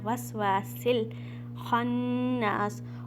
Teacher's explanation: करके पढ़ना है। वस्वासिल खन्नास, अब यहाँ पर हमज़तुल वसल, अगेन हमज़तुल वसल मीन साइलेंट अलिफ, सीन को आपने लाम में मिलाना है।